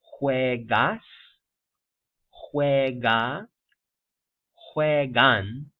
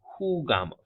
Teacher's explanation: And the J again is like a soft H, like the English H, right? Aspirated, not voiced.